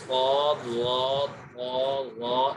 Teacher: صفت اطباق وہ صفت ہوتی ہے کہ جس میں زبان کا جو بیچ ہے وہ اوپر کے تالو سے لگ جاتا ہے، اس وجہ سے یہ حروف کچھ زیادہ موٹے ہو جاتے ہیں، جیسے صاد، ضاد، طا، ظا، ان چاروں حروف میں زبان کا بیچ اوپر کے تالو کی طرف اٹھ رہا ہے۔